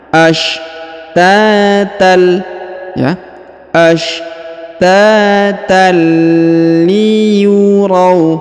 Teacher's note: huruf tanwin an bertemu dengan lam bertasdid, maka tanwinnya menghilang melebur ke huruf lam